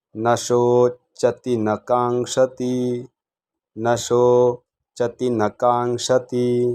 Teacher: शो हा दीर्घ म्हणायचा नशो त ला पहिली वेलांटी ती चती रस्व म्हणायचं